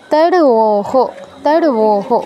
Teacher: রটা তো হাফ উচ্চারণ হবে, রয়ের সাথে অটা উচ্চারণ হবে না, আর ওটা পূর্ণ উচ্চারণ হবে, এর সাথে ওকারটা যুক্ত হবে।